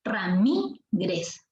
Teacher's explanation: La fuerza de voz está en la sílaba mi. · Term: palabra grave